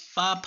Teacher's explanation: जब बोलते हैं तभी हमारे ओष्ठ आपस में मिल जाते हैं, तो ये क्या हो जाएगा, ये ओष्ठ से हो जाएगा, ओष्ठ से हो जाएगा।